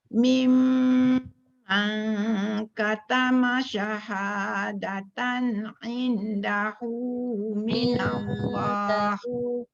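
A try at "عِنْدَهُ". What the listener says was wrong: Indahu nun bertemu dal tu dengung, tak boleh tinggal.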